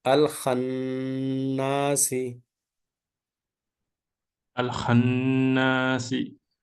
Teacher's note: Here, noon with the mushaddada. Noon mushaddada, that must be pronounced with the gunna. Gunna 2 units. Alif mad 2 units.